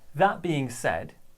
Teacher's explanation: we're going to stress that, and we're going to stress said.